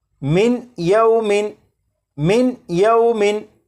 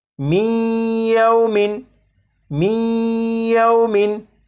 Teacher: جب نون ساکن کے بعد یا حروف یرملون میں سے ہے تو نون ساکن کو یا میں ادغام کر کے پڑھیں گے، ملا کر پڑھیں گے